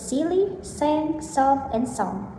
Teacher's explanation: There are words silly, sang, soft, and song. Voicing voiceless. Place of articulation alveolar. Manner of articulation fricative.